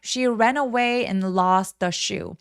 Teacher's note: st가 모음과 만나서 연음돼서 lost라고 연결해 주세요.